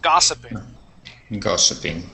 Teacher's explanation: The accent is at the very beginning of the word, and that is an ah sound that the O makes.